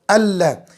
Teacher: नून साकिन तनवीन की आवाज़ ख़त्म हो जाती है, यानी लाम को डायरेक्ट हमज़ा से मिलाना है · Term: इदगाम बिला गुन्ना